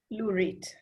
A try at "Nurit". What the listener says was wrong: Nurit with an N.